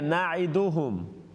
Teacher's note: नून को लंबा ना करे